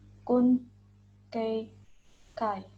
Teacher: Next, yang kelima yaitu huruf G, dibaca K. Suara pangkal lidah atau velar. Pangkal lidah menyentuh langit-langit mulut.